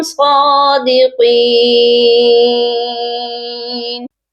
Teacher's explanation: صادقین، صاد کو بھی موٹا کر کے پڑھیں گے اور قاف کو بھی موٹا کریں گے اور اس کے ساتھ یا مدہ ہے، اس کو ایک الف کے برابر لمبا کر کے پڑھیں گے